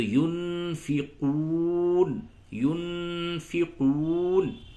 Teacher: دیکھیں نون ساکن کے بعد یہ فا آیا ہے، تو یہاں پہ آپ جو ہے اخفا کریں گے۔ نون ساکن اور تنوین کے بعد 15 حروف ایسے ہیں جو حروف اخفا کہلاتے ہیں، اس میں سے فا بھی ہے۔